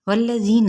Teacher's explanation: واو کو جو کہ ہونٹوں کی نا تمام گلائی سے ادا ہوتا ہے۔ ذی یا مدہ کا قاعدہ، انتہائی نرمی کے ساتھ ایک الف یا 2 حرکات کے برابر اس کو کھینچنا ہے، نون کی حرکت کو لمبا نہیں کرنا۔